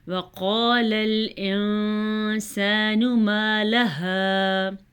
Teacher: نون ساکن ہے، نون ساکن کے بعد سین ہے، سین حروف اخفا میں شامل ہے، اسی لیے نون ساکن پہ اخفا ہوگا